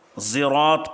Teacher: صراط کے صاد کو زا کی بو دے کر کے زراط پڑھنا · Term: اشمام بالحرف